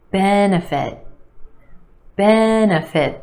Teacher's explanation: Three syllables here. Our emphasis on the first syllable, the e sound.